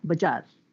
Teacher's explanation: in Telugu, we don't have Z. So bazaar often ends up as a bajar.